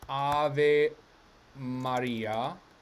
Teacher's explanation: it's pronounced ave maria with a double m in standard ducione italian because this m gets doubled whenever it's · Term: phrasal doubling